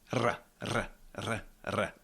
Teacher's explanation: short, crisp, trilled, nice